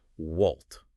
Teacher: She will literally just use a person's name with a rising intonation.